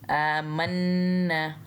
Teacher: मीम को नून से मिलाते हुए गुन्ना करना है, आमन्ना। और नून को भी एक अलिफ जितना लंबा खींचना है, क्योंकि इसके साइड पे अलिफ और उसके ऊपर फिर से कोई हरकत नहीं है, आमन्ना।